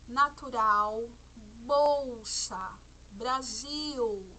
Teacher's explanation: Nas palavras natural, bolsa e Brasil, a letra L aparece no final de sílaba, representando o som U. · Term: som do U